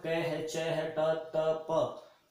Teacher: ये जो वर्ण है, पहला वर्ग जो है, वर्ग का पहला जो वर्ण है वो क है, च है, ट, त, प, ये सारे जो हैं अल्पप्राण हैं, श्वास वायु कम लेते हैं